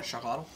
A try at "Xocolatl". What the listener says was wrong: Well, it's a S sound, not a Z.